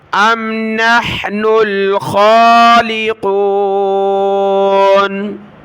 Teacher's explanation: خا کو اوپر کھینچا کھڑی زبر کی وجہ سے